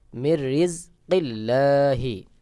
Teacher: নুন সাকিন বাদ হয়ে র কে মিলায় পড়তে হবে কারণ হলো নুন সাকিনের পরে র ইদগামে বেগুন্নার হরফ গুন্না ছাড়া মিলায় পড়তে হয়